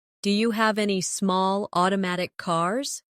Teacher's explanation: Do you becomes dia naturally?